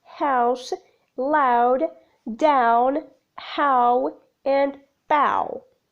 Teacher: Characteristics: the glide begins in a position quite similar to long a, moving up towards u. The lips start neutral with a movement to loosely rounded. The glide is not always completed as the movement involved is extensive, like in the words house, loud, down, how, and bow. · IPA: /hɑʊs/